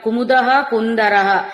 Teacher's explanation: కుముదః కుందరః ఈ రెండు చోట్ల ఉన్న విసర్గలు హకారమే తీసుకుంటామండి